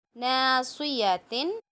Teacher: نون میں الف، نون کو کھینچ کے پڑھنا ہے، الف سے پہلے زبر ہے